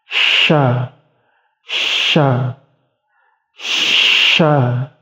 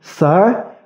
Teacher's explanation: Untuk posisi lidahnya, jadi lidah agak di belakang itu diangkat mendekati langit-langit. Dan untuk ujung lidahnya itu berada di pangkal gigi seri bawah. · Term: huruf shin